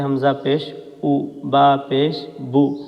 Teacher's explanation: پیش کی آواز کو نکالتے ہوئے ہمارے ہونٹ گول ہوتے ہیں